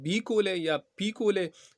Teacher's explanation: जब हूंठ दोनों मिलते हैं तो रुकावट आता है, और दोनों हूंठ जो है वो बंद होते हैं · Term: बी और पी